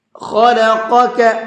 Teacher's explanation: الذی خلقک فسواک فعدلک، خلقک، پہلے بڑا قاف ہے پھر چھوٹا کاف ہے، بڑے قاف کو پر کر کے پڑھنا ہے اور چھوٹے کاف کو نارملی پڑھنا ہے